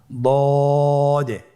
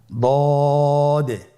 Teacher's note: দদ হারাফটি উচ্চারণ করার সময় অবশ্যই তিন আলিফ টেনে পড়তে হবে